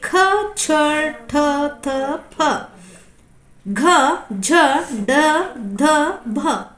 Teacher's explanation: ಹೆಚ್ಚು ಉಸಿರು ಕೊಟ್ಟು ಉಚ್ಚರಿಸುವ ವ್ಯಂಜನಗಳು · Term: ಮಹಾಪ್ರಾಣಾಕ್ಷರಗಳು